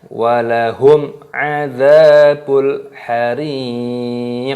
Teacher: Qaf itu termasuk huruf qalqalah. Jadi dipantulkan suaranya